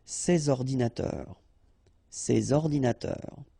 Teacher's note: you should make the liaison between S and O